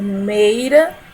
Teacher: pela pronúncia nós sabemos que o E é uma vogal, tem um som mais forte. E o I, ele vai ser semivogal. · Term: ditongo decrescente